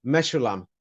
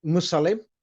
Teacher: But they've pronounced it as a sh instead of s.